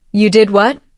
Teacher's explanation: With a rising tone at the end, it shows surprise.